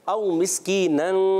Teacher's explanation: इख्फा गुन्ना। औ मिस्कीनन, होंठ गोल नहीं करेंगे।